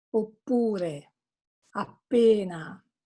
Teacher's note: the vowel following the double consonant is a little longer.